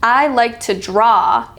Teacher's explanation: in that sentence the stress is on the word draw because that's the point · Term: sentence stress